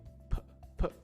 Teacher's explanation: For p, it's very close to the front of your mouth, right? P. The stop is with your lips. P. So basically you breathe air out, and as the air is coming out, you stop it with your lips, right?